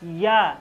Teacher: देखिए या का उच्चारण होता है तालव्य से, यानी तालु से।